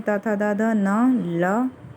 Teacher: फिर उसके बाद है दंत। दंत में दांतों को टच करती है जीवा, और उससे फिर जो वर्ण निकलते हैं वो हैं त, थ, द, ध, न, ल